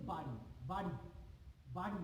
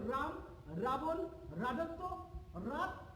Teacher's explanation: যখন আমরা র উচ্চারণ করি আমাদের জিহ্বার অগ্রভাগটা সামান্য কেঁপে ওঠে। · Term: কম্পিত ব্যঞ্জন